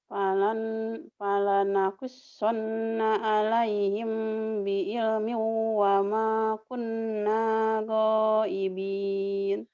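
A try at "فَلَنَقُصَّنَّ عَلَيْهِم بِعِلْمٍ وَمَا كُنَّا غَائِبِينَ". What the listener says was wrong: Ngeunah sugannya ditekan-tekan gitu teh nya. Ulah diteken-teken atuh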